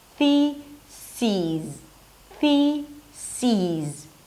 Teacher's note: To say the plural form, change the second syllable into a high E sound and a Z at the end.